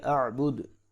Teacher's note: وقف کریں گے تو دال ساکن ہوگا، قلقلہ کر کے پڑھیں گے